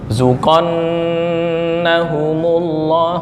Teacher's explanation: nun gunnah mohon ditahan ya ketukannya